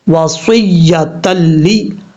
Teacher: لام اور را میں غنہ نہیں ہوگا، ادغام ہوگا. اب یہاں پر 2 زبر کے بعد لام آ رہا ہے، یہاں ادغام تو ہو رہا ہے لیکن غنہ نہیں ہو رہا.